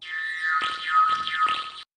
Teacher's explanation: the tongue body pushes forward to squeeze air past the tongue tip to create an alveolar trill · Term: click roll